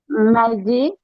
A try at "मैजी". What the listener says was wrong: Very good.